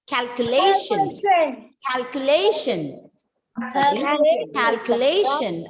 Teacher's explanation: you know this syllable has to be stressed second last